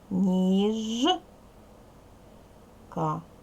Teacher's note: дзвінкий приголосний бо в нас є ж йому пара є